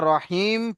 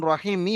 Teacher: এখানে দেখেন জের এসছে তাই এটাকে আমরা রহিম পড়েছি মি পড়লাম না যখন দাঁড়াবো তখন রহিমি হবে না রহিম হবে